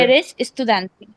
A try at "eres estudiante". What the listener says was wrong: But तुम्हारे tone से लगा कि वो क्वेश्चन था।